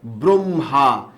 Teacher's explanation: র ফলা ব এর আগে উচ্চারিত হয় না পরে উচ্চারিত হয় অবশ্যই পরে উচ্চারিত হয়